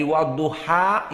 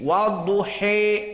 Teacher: At-taklil dengan Al-Imalah intinya sama, di mana dia itu condong dari fathah kepada al-kasrah. Namun Al-Imalah Al-Kubra banyak sekali condongnya sehingga mendekati kepada kasrah. Dari wadduha yang fathah, wadduha menjadi wadduhe.